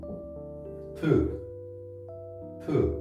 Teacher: This one has another stripe, and now there's also an airflow. This is like a T, but it's not just like a normal T, but it's like a T with air aspiration.